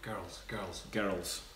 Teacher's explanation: Girls is supposed to be one syllable, but Scottish people say it with two.